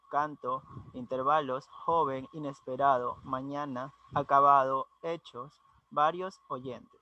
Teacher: están acentuadas en la anteúltima sílaba